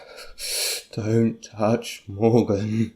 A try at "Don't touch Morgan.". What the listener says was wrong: That doesn't sound like extremely angry to me. It sounds like you're scared of people in your house, or you're scared of other people hearing you. You have to go all out, you know, shout it. It's like, don't touch Morgan! Like that, you know.